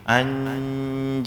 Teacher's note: Ketemu jim, nun sukunnya dibaca di makhraj huruf jim.